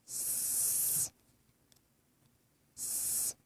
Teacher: So for the S sound, the S sound is a stream of air. The S is voiceless. That is, the larynx does not vibrate as it does on its voice partner, the letter Z.